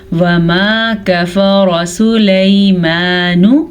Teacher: یا ساکن سے پہلے زبر ہے تو یہ یا لین ہے. اسے قطعاً ہم کھینچ کے نہیں پڑھیں گے